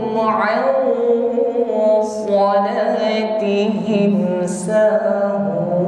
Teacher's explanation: Karena huruf shad ini huruf isti'la yang bunyinya tebal, maka suara dengungnya juga harus tebal. Ya. Jadi bukan sekedar dengung. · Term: ikhfa